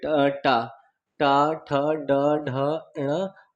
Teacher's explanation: ये हमारे मूर्धा यानी मुंह से बोले जाते हैं